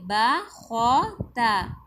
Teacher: با باریک پڑھی جائے گی اور خو کو پر پڑھیں گے، تا کو پھر باریک پڑھیں گے